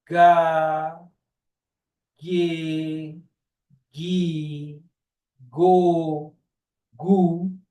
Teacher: se você pronunciar ga G gu go você vai perceber que tudo foi vibrado aqui nessa na garganta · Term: gutural sonora